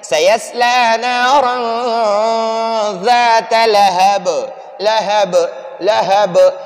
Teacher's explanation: نارا میں آواز کو ناک میں چھپائیں گے، اس میں غنہ کریں گے.